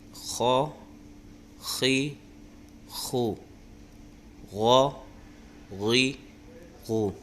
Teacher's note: یہ دونوں حروف مستعلیہ میں سے ہیں، اس لیے ان کی آواز موٹی نکلی